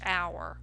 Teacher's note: when you say hour, you don't hear the H. The H is silent. You actually hear a vowel sound, ow, a soft sound.